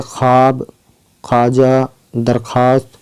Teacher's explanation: इसके बाद हम देखते हैं तीसरी वाव मादुला। वह वाव जो लिखा तो जाता है लेकिन पढ़ा नहीं जाता, ये सिर्फ खे के बाद ही आता है, जैसे ख्वाब, ख्वाजा, दरख्वास्त, है ना।